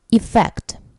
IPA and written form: ɪˈfekt (EFFECT)